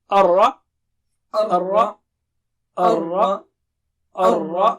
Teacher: Ra should be thick and it should not be like English Ra. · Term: thick Ra